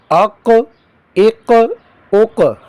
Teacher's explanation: اس کو موٹا کر کے پڑھیں گے اور حروف قلقلہ بھی کریں گے